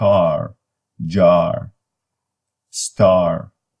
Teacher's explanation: this is the most back sound and English language and it is low back tense and unrounded